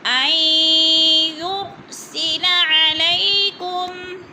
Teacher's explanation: نون ساکن کو نہیں پڑھیں گے، یا پہ ادغام کریں گے، تھوڑا سا سختی سے جمع کر پڑھیں گے۔